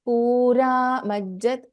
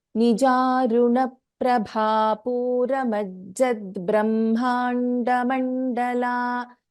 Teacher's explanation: So after Ra, immediately you should take Ma. You should not say Pura Majjat.